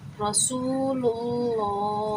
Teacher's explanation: اور اللہ کے نام سے پہلے زبر یہ پیش، ابھی میں نے آپ کو پیچھے سمجھایا ہے، اب اللہ کے نام سے پہلے پیش آ گیا تو اللہ کا نام ہم موٹا پڑھیں گے، یعنی کہ پر کر کے پڑھیں گے